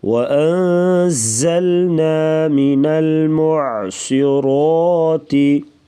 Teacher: زا کو سختی سے پڑھا جائے گا، سیٹی جیسی آواز